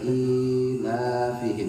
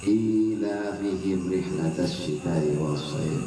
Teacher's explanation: I-nya dipanjangin karena ya.